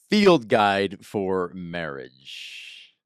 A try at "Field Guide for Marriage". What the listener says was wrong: Why do you have to say field like that? you're angry at the word field. It's like, whoa, what did field do to